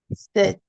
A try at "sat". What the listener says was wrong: Sat. You say set, but sat.